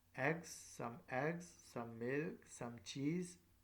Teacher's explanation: Each item is spoken with a rising intonation